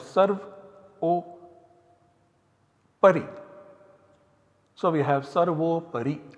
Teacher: 6187 applies and substitutes this A and U by O.